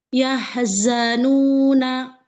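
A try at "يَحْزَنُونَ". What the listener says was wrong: Yahzanuna. Nanya jangan pakai hamzah, sayang.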